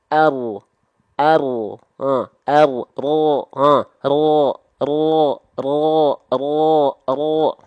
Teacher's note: ujung lidah kita tidak akan nempel karena memang bukan dari ujung lidah tapi dari punggung lidah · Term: huruf ro